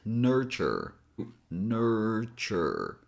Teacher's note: T here doesn't have that typical T sound as in my name for example. It has a different sound. It has a CH sound as in check.